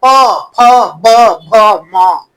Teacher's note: प वर्ग, ये ओठ से, दोनों ओठ सटेगा जीभ में, प फ ब भ म, बोलो हाँ हाँ देखो सब ओठ।